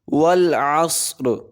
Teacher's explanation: را کو باریک پڑھیں گے کیونکہ اس کے نیچے زیر آ گئی ہے